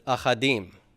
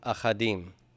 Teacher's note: Stresses on the im, so this syllable here with the aleph is left open and propertonic, and it has to reduce to a vocal shava.